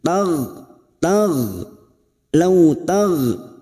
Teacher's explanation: Kita lunakkan law taghfulu, huruf gha, huruf ghain, hati-hati jangan sampai memantul. Huruf gha posisi lidah bagian belakang naik ke atas. Huruf gha memiliki sifat jahar dan rikhwah, maka hembuskan nafas sampai menimbulkan suara dan biarkan suara itu lepas tanpa adanya tahanan.